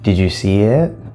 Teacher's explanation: now did is not stressed you is not stressed because these are function words